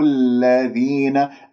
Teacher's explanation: اللام من أحرف التوسط ليست رخوة · الذين لا تمسك اللام، لا تطل زمنها